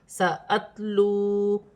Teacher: واو ساکن سے پہلے پیش ہے، واو مدہ بن رہی ہے، ایک الف کی مقدار کھینچ کر پڑھا جائے گا